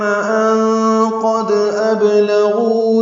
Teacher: نون ساکن کے بعد قاف آنے کی وجہ سے اخفا ہے، نون کی آواز چھپائیں گے. قاف پر پڑھیں گے، دال سے ملائیں گے تو دال ساکن میں اس پہ قلقلہ ہوگا.